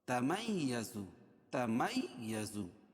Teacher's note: میم کو یا میں سختی کے ساتھ ملیں گے